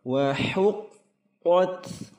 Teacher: huruf qaf dalam pangkal lidah, kemudian huruf ta'nits berdesis.